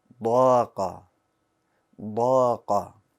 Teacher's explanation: You hear the boldness in the alif, right? The alif changed because of the letter before it. Remember, if the letter's a bold letter, then the alif becomes bold.